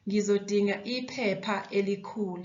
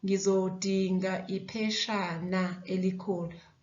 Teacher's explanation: Pa changes into sha.